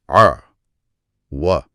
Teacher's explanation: हल्क से आइन की गहरी आवाज निकालते हुए व की तरफ आना है